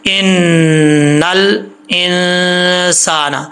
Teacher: آگے ہے ان، آپ کو میں نے بتایا تھا نون مشدد اور میم مشدد، یعنی نون اور میم کے اوپر شد آ جائے تو غنہ ہوتا ہے، یہاں پہ غنہ کریں گے 1 الف کی مقدار. ان الانسان، لام میں قلقلہ نہیں کرنا، نل نل ایسا نہیں، ان الانسان انسان.